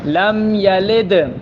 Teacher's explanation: یہاں دال ساکن ہے، قلقلہ ہوگا